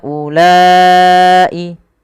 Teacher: Panjangkan huruf ha sepanjang empat harakat dan panjangkanlah huruf la sepanjang empat harakat pula atau lima harakat untuk kedua-duanya. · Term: mad jaiz munfasil